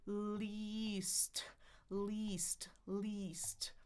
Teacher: So, my tongue is at the top of the bump for the L. Then it goes down and I'm smiling for the e. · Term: long eye